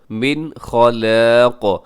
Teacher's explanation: اس میں من پہ نون ساکن کے بعد خا حروف حلقی میں سے اظہار کیجیے گا